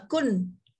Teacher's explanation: Kalau kita sentuh dia jadi hukum lain lah. Kalau sebut kun, kita sentuh ujung lidah ke langit, ya, contoh kun, dia tak jadi dengung, dia sebut kun terus kun.